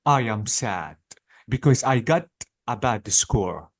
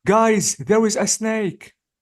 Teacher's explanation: So notice my intonation is up. Why? Because I'm saying surprising information.